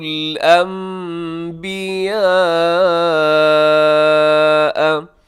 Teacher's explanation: یہاں انبیاء میں نون ساکن کے بعد با ہے تو نون کو میم سے چینج کیجیے گا